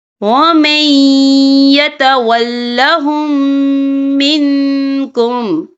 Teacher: ہم پچھلے میم کو اگلے میم میں مدغم کریں گے اور ہم یہاں غنہ بھی کریں گے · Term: ادغام شفوی